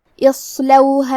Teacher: کنتم هذه جہنم التي كنتم توعدون اصلوها اليوم بما كنتم تکفرون کلمت اصلوها میں حرف الالف کے نیچے زیر ہے تو ہمیں حمزہ کو ظاہر کرنا ہے، حمزہ کی ادائیگی حلق کے نیچے والی حصے سے ہے اور ہم حمزہ کو زیر سے پڑھیں گے۔ پھر حرف الصاد ہے لہذا ہمیں صاد کو بھاری آواز میں پڑھنا ہے۔